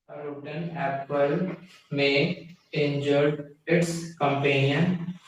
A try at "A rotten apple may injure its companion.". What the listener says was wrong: उच्चारण में ऐसा लग रहा है जैसे वो सेकंड फॉर्म बोल रहा है।